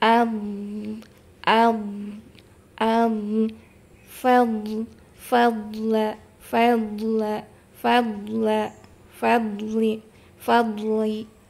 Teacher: tumpuan kita bukan di istitolahnya itu bukan di ujung lidah tapi dod itu dari gigi geraham ya.